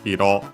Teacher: Hiro on its own, accented on the last syllable, means color. Used as a suffix makes the word unaccented.